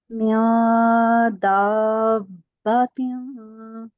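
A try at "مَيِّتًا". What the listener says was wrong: جی تشدید کو واضح کریں اور مد کو تھوڑا سا اور کھینچیے گا.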